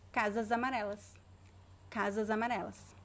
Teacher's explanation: the s between two vowels is pronounced as a z z as in zebra so zebra so we should say casamareles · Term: z sound